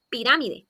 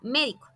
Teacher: Estas palabras tienen su sílaba tónica en la antepenúltima sílaba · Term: palabras esdrújulas